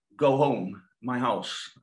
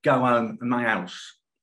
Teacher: even though Cockney, London's dialect, is H-dropping, MLE is not. So we talk about H reinstatement.